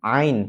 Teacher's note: Ain ini tempatnya di tenggorokan bagian tengah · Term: huruf Ain